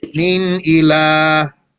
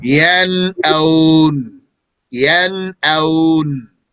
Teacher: Examples from the Quran of the noon Saakinah and Tanween pronounced clearly without a humming ghunnah because they are followed by a throat letter are min ila. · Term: izhar